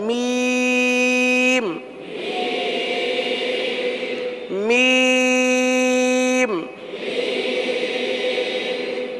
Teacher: मीम दोनों होठों के खुश्क हिस्से से अदा होता है